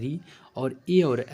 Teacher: मुख के भीतर अगली छत से उच्चारित होगा · ए और ऐ जो होंगे कंठ और तालु दोनों की सहायता से आपके उच्चारित होंगे।